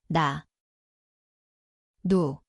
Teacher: die plek is die tongpunt boonste tandvleis.